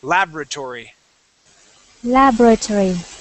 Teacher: Personally, the way I was taught is I say laboratory with the accent at the very beginning.